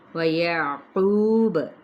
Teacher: اب اگر ہم وقف کرتے ہیں تو با پر کلکلا کریں گے اور قو پہ واو مدہ، ساکن کر دیا تو یہ وقف بالاسکان ہو جائے گا۔